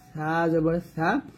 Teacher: সাটা জিহ্বার আগা উপরে দাঁতের আগার সঙ্গে লাগবে, উপরে দাঁতে লাগবে কিন্তু নিচে দাঁতে লাগবে না, সা জবর সা।